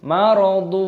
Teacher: Dhammah tanwin bertemu dengan wawu idgham bi gunnah, dimasukkan dan disertai berdengung.